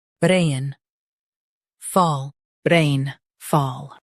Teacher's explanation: Stress rain and keep fall light.